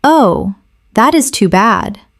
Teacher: With soft, low tone.